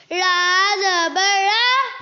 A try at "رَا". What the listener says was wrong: غلط. الف نہیں پڑھا، الف مدہ ہے نا، الف سے پہلے زبر ہے. لمبا کرو. اور را موٹی نہیں پڑھی. زبر را زبر الف را.